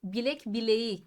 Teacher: K yumuşak g'ye dönüştü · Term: ünsüz yumuşaması